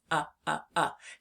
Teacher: When we say the short u sound, our mouth is more closed than it is with the a. It's more up like this.